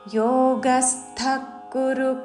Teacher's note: విసర్గ తర్వాత క తో పదము మొదలైనది కాబట్టి శ్వాస వదులుతూ ఖ లాగా ఉచ్చారణ చేస్తూ